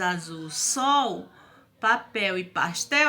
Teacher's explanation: essas palavras azul sol papel e pastel elas são escrita com l mais o som é da vogal u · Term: som da vogal u